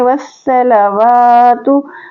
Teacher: वाव के ऊपर खड़ा ज़बर है, एक अलिफ के बराबर खींच के पढ़ेंगे